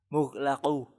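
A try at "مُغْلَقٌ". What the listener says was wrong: Coba perbaiki qafnya. Mughlaqun.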